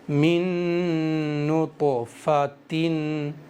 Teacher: طا کے اندر قلقلہ ہوگا کیونکہ یہاں طا پر سکون ہے، طا قلقلہ کے 5 حرفوں میں سے ہے، تو میں قلقلہ کس طرح سے کروں گا اس پر بھی آپ کو دھیان دینا ہے۔